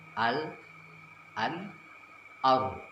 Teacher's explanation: Tempat keluarnya adalah ujung lidah menempel pada langit-langit depan atas. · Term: makhraj huruf lam